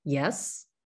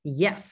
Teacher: Yes? would be kind of like a second tone that goes up, and Yes! would be an emphatic tone that goes down